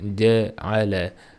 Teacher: Ja ham bizni o'zbek tilidagi ja emas, bu qalinroq ja. Ja deb talaffuz qilinadi.